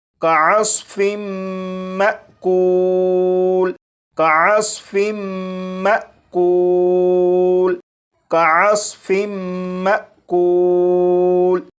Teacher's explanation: اب ان دونوں الفاظ کو پڑھیں گے، یہاں پر میم مشدد پر غنہ بھی ہوگا اور یہاں پر الف کے اوپر جزم ہے، یعنی یہ حمزہ ساکنہ ہے، تو حمزہ ساکنہ کو جھٹکا دے کر پڑھیں گے